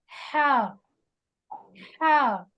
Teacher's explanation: حلق کے درمیانی حصے سے ورڈ ہا ادا ہوتا ہے